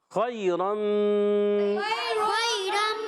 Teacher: اور خیرم منہا میں خا ادا ہوتا ہے حلق کے اوپر والے حصے سے، خا عرف حلقی میں سے بھی ہے اور عرف مستعلیہ میں سے بھی ہے، موٹا بھی ادا کریں گے۔ اور یا ساکن سے پہلے زبر آنے کی وجہ سے یا لین ہوگا، نرمی سے ادا کریں گے۔